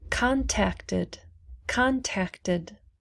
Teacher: contact ends with the t so we pronounce the id